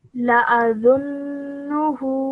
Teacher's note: it produces a 2-second nasal sound, and the name of this sound is called ghunna